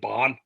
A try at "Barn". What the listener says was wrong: Yeah, and it sounds like you're saying Bond and not Barn. Yeah, significant improvement.